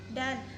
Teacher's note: Ciri-ciri hidup oral apikodental plosif